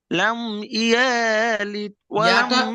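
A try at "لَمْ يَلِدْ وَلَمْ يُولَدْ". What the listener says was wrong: ইয়া টান হয়ে যাচ্ছে, ইয়ার উপরে হারাকাত আছে, ইয়া টান হয়ে যাচ্ছে।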